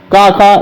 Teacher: का खा ये कंठ हो गया दोस्तों